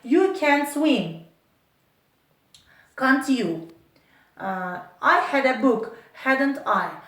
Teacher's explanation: the first part is spoken with a falling intonation. The second part with a rising.